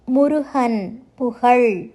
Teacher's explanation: உயிரொளியை அடுத்து வரும்போது ஹ உச்சரிப்பை கொடுக்கும்